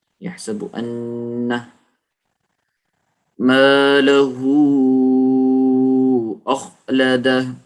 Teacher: یحسب ان مالہ اخلدہ. یحسب ان، غنہ کریں گے، نون کے اوپر شد آ گئی